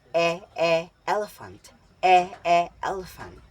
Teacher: Patinig e. Binibigas ng gitna ang posisyon ng dila at harap ang bahagi ng dila na ginagamit.